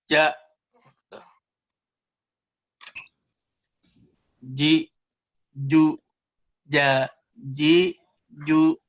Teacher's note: Nah, kalau kita lihat misalnya letak dari gambar huruf jim itu kan lidahnya ke sini, lidahnya itu ke langit-langit nempel jim, tapi tidak ada hembusan